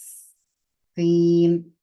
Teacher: इसकी आवाज निकालेंगे, जबान की जो नोक है वो नीचे के दांतों की जड़ों को लगेगी, तो तीन अदा होगा, हवा यहां से पास होगी दोनों दांतों के बीच में से। जबान की नोक को ऊपर नहीं लगाना है, बल्कि नीचे की तरफ रखना है।